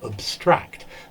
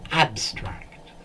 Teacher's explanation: But if we use it as a verb, to abstract, so abstract, the stress is on the second syllable in the verb, whereas the adjective and noun, it's on the first syllable.